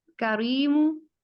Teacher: यहाँ पर रॉ को पुर नहीं पढ़ेंगे बल्कि बारीक अदा किया जाएगा, तो ये करीमु हो जाएगा।